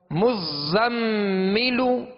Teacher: آگے میم مشدد ہے تو کیا کریں گے؟ غنہ کریں گے، مزملو، زا کو سختی میں پڑھیں گے، سیٹی کی آواز پیدا ہوگی.